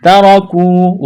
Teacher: لو ترکو، واو لین ہے، بغیر کھینچ کے پڑھنا ہے، تا کو باریک کرنا ہے، را کو موٹا کرنا ہے، جلدی پڑھیں گے، تا اور را کو زبر ہے، ترکو، واو مدہ ہے، ایک الف کے برابر کھینچنا ہے۔